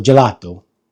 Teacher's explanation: the o is more of an open o